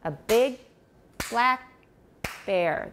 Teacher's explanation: There are no unstressed syllables between those stressed syllables.